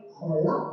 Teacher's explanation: ini ada huruf qalqalah yang dibaca memantul